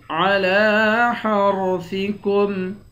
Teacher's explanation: حا کو را کے ساتھ ملا کر را کو موٹا پڑھیں گے